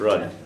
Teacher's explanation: Kind of a shorter sound and kind of between a U and an O.